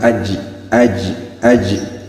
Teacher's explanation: Bagaimana pengucapan huruf Jim yaitu di tengah lidah cara pengucapannya tidak terlalu Menempel